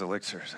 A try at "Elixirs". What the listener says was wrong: Yeah, Elle. You have the emphasis on Elle. It's gotta linger, right, when you order it?